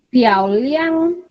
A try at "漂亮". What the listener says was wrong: 不是OK should be fourth tone 漂亮 OK fourth tone OK 对漂亮 pretty 漂亮fourth tone PIA is fourth tone on A 漂亮 correct it in your book or write it down in your notes OK 漂亮好漂亮 very beautiful OK 很好 number 22我看看是谁呀？哈，Charlene 在吗？Charlene 在吗？Charlene 好 ，Charlene 在。好 ，Can you read number 22?